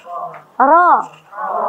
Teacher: Dalam kondisi fathah dia dibaca tebal.